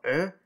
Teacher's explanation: the front rounded open-mid vowel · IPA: /œ/